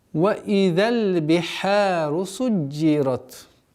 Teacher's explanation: Удваиваем джим. Касра. Ра твердая. И та фрикативная.